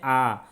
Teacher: पूरी तरीके से अगर हम बोलने में मुंह खोल देते हैं वहाँ पर विव्रत। जैसे आ, तो आ बोलने में क्या है? मुख पूरी तरीके से खुल गया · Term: विव्रत स्वर